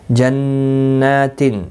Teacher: نون مشدد پر غنہ ہوگا، ایک الف کی مقدار کے برابر کھینچ کر بھی پڑھا جائے گا کھڑی حرکات کی وجہ سے۔